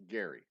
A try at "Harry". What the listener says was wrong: Harry. No, Harry. With an H. Harry.